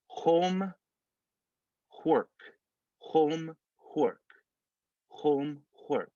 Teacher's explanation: So we're going to add that K sound in front of the H for home. And we're going to add the H sound in front of the W for work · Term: added H